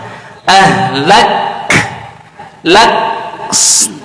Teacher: Tahan dulu huruf kafnya, baru keluarkan hamasnya. Lak, lak, sidahnya tahan dulu suaranya, baru dikeluarkan hamasnya. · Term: syiddah